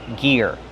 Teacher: use the hard G sound like gas and go, plus the long E, ear, like your ear.